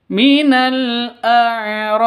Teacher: Kalau karena berhenti maka bi-nya berubah menjadi sukun. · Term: kolkolah kubaro